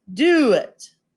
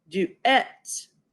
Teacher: the only difference is we accent the second syllable